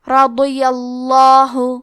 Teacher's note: حرف ضاد کی ادائیگی زبان کے کروٹ اور اوپر کے داڑھوں کی جڑ سے ہے. ضاد حروف التفخیم میں سے ہے تو ہم یہ حرف کو موٹی آواز میں پڑھیں گے. · کیونکہ یہاں پہ زبر ہے لہذا لفظ الجلالہ کے لام کا حکم ہے تفخیم، تو ہمیں حرف اللام کو موٹی آواز میں پڑھنا ہے